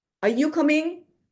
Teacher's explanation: when I'm asking question, are you coming? I have to go up.